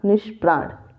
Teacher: ठीक, और देख लीजिए जैसे निह प्लस प्राण, जैसे देखिए प्राण तो प आया हुआ है, प्राण में प, ठीक, और नी आ गया, ई आ गया, विसर्ग है ही, तो इसका क्या हो जाएगा नी, और विसर्ग का हो जाएगा स, वो भी मूर्धन्य स होगा, और उसके बाद प्राण, निष्प्राण।